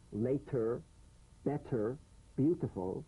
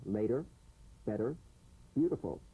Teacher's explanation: The medial T becomes a soft D. All right? It's not a complete D, but it goes toward a D.